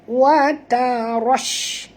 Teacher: Ra tebal tuan-tuan. Jangan tebalkan ta.